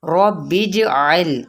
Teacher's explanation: را کو پر پڑھنا ہے اور جیم پہ قلقلہ کرنا ہے